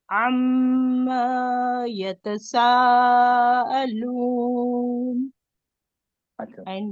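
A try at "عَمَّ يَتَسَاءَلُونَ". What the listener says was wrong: आइन को दो हरकत खींच दिए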